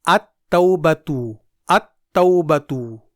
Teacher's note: بلکہ اسے حروف شمسی میں ادغام کر دیا جائے گا، یعنی ال کے لام کو پڑھنے کے بجائے حروف شمسی کو 2 بار پڑھا جائے گا ، جیسے التوبتو میں ال کے بعد تا حرف شمسی ہے،